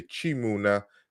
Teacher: the k is palatalized